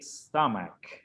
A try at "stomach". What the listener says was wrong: Por ahí me sonó un ch. Vamos a sin el ch.